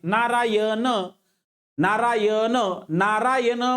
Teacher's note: नारायण म्हणजे जीभ मुरडून मुरध्याला लागते म्हणून हा बानाचा न मर्धेमध्ये जातो